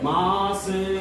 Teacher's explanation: உகரம் குறுகி தன்னுடைய ஒரு மாத்திரை அளவிலிருந்து அரை மாத்திரை அளவாக குறைஞ்சு ஒலிக்கிறதுனால அது குற்றியல் உகரம் சொல்றோம்